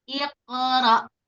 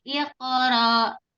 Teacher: hamzah sukun itu sifatnya ada syiddah. Syiddah itu bagaimana? Tertahan suaranya ya. Jadi harus benar-benar tahan.